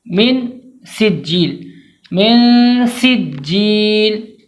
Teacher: سین کو واضح کر کے پڑھیں گے، سیٹی کی آواز بالکل آنی چاہیے ، جیم کو 2 بار پڑھیں گے، تاخیر کر کے پڑھیں